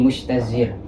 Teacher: di situ terdapat shin yang mahmus dan juga rikhwah. Kemudian ada ta yang mahmus sekali, yang mahmusnya itu berat, juga za yang majhur. Jadi makhraj di antara huruf-huruf di sini itu saling bertabrakan yang menyebabkan susah untuk diucapkan, yakni mustajzir. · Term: tanafur